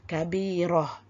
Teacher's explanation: kita hanya akan membunyikan pada ta tersebut apabila nak waqaf bunyi ha saja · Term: ta marbutah